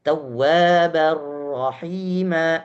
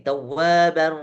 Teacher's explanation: Bahkan ini dimasukkan dengan diistilahkan bila gunnah. Tidak ada gunnah sama sekali. Berarti dia total masuk ke dalam huruf ro yang tidak ada dengungnya ketika kita baca. Ro tidak punya sifat dengung. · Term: idgham kamil